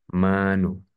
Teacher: mat tabi'i ini dibaca panjang dua harokat